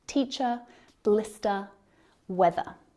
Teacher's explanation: so that final sound is a schwa the ER is silent unless the word following starts with a vowel and then the ER sound becomes a linking sound · we don't pronounce the ER R sound at the end of words like teacher blister weather so that final sound is a schwa the ER is silent unless the word following starts with a